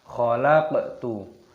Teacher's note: qafnya sukun, qalqalah pantulkan suaranya